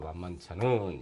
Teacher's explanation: 울림소리의 뒤에서 날 때 지가 이때는 치읓으로 만만치 않은 이렇게 해서 발음이 난다는 것입니다